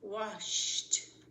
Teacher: The one where ed just sounds like a T is washed. Shh doesn't vibrate.